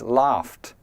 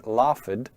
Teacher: the verb laugh ends with a f sound, which is unvoiced. So the past tense is laughed. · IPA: /lɑːft/